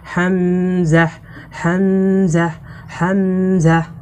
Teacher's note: হামজা অক্ষরকে কন্ঠনালীর শুরু থেকে শক্ত করে পড়তে হয়